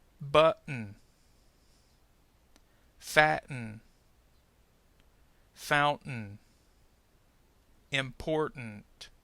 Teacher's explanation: some English speakers may actually use a glottal stop instead of producing a discernable sound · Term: glottal T